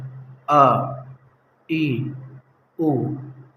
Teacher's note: جیسا کہ ہم نے پڑھا تھا الف الف، لیکن اس کا جو ساؤنڈ ہوتا ہے اور جو ریل ہے اور وہی پڑھنا ہے ہمیشہ، وہ یہ ہے آ ای او۔ الف کو ادا کرتے وقت منہ کے اندر کا کوئی حصہ کسی سے ٹچ نہیں ہوتا، بالکل خالی جگہ سے ادا ہو جاتا ہے۔